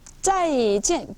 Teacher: 사성이니까, 사성 어떻게 하라 그랬어요? 폭포에서 물 떨어지듯이. 뚝 떨어지고.